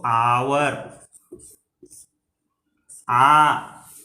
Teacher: First sound जो हमारे मुंह से निकला वो निकला एच, इसका साइलेंट है, इट इज नॉट प्रोनाउंस्ड।